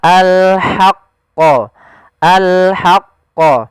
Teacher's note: Jangan dibaca wala talbisul haqqa, tapi dia ha posisinya adalah kita bagaimana menyempurnakan huruf ha kecil, yaitu kita mengeluarkan dari tengah tenggorokan kita ha disertai dengan adanya nafas.